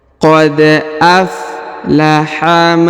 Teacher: ujung dipanjangkan dua harakat ya fujur kemudian kita lanjut qod aflaha huruf Dal berharakat sukun maka kita pantulkan atau kita qolqalahkan